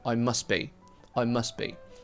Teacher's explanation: the st in must and also the b in be, they form a consonant cluster.